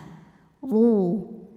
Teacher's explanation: dibunyikan dengan tebal dengan cara mengangkat pangkal lidah kita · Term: tafkhim